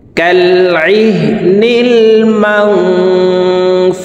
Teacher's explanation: মাং এখানে ইকফা গুন্না, নুন সাকিনের পরে ইকফার 15টি হরফের ভিতর একটি হরফ ফা আসছে, এই কারণে এই নুন সাকিনকে নাকের ভিতরে লুকাইয়া গুন্নার সহিত পড়ব